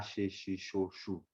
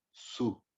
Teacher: O S, quando tem esse acento em cima dele, fica o som de chu, como de chá